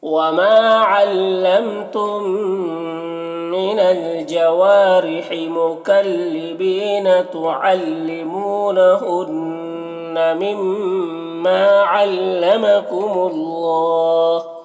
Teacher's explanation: ہنہ میں نون مشدد ہے، غنہ کے ساتھ میں پڑھیں گے۔ مما میں مشدد حرف ہے میم، تو اس کو بھی غنہ کے ساتھ میں پڑھیں گے، اور الف مدہ ہے، اسے ایک الف کے برابر کھینچیں گے۔